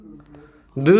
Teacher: 니은은 혀 끝에서 소리 난다 라고 해서 혀끝 소리